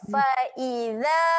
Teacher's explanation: Za jaga makhraj, huruf zal kena jeli lidah, keluarkan lidah